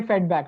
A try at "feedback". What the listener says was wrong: yes, feedback. Yes, you said feedback. So you need to stress on the e a little bit more.